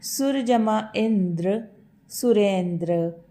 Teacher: यहाँ पर भी अ और ई मिलकर ए में परिवर्तित हुए हैं